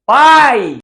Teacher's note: Pai, vogal A, e o I, ela tá fraquinha. Aí eu chamo ela de semivogal.